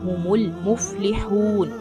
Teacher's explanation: हलक से आवाज निकालना और मीम को लाम के साथ मिलाना है